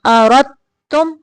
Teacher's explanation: را کو تا کے ساتھ ملانا ہے